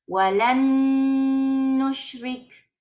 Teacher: Esta nun no se va a pronunciar. Saltamos a la que tiene la shadda.